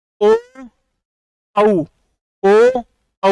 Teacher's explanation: ओ औ होठ गोल हो रहे है ना